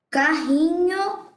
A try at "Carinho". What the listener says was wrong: Carinho. Carinho. Isso, um R só. Carinho.